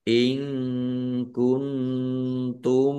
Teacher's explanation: In kuntum nun sukun bertemu dengan huruf kaf bacaan ikhfa. Nun sukun bertemu dengan huruf ta juga ikhfa dibaca samar-samar